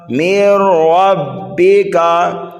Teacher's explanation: یہاں پر ادغام تو ہو رہا ہے لیکن بغیر گننے کے، یہاں پر گننا نہیں کرنا ہے۔